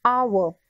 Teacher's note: Though hour begins with the consonant H, it begins with a vowel sound as H remains silent